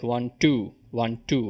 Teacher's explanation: an iambic passage should sound like one two one two where you hit the second syllable